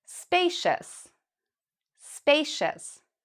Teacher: We pronounce cious as shus.